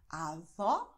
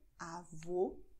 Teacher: Avó offen, Avô geschlossen.